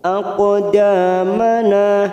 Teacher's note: Wa tsabbit masuk pada huruf ba yang bertasdid, wathabbit tak sukun, wathabbit aqdamana, aqo qaf sukun qalqalah sugro kita pantulkan